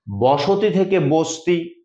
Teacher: বসতি উচ্চারণ করলে একটা অ উচ্চারিত হয়, বস্তি শব্দের মধ্যে সেই অ থাকছে না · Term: মধ্যস্বর লোপ